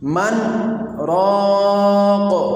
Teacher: من راقن میں نون ساکن کا حرف را کے ساتھ اتصال سکتہ کی وجہ سے نہیں ہو رہا